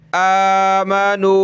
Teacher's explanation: حمزہ کھڑا زبر آ، ایک الف کی لمٹ میں کھینچیں گے اوپر